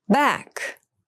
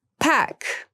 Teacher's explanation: back has the voiced B sound and pack has the unvoiced P sound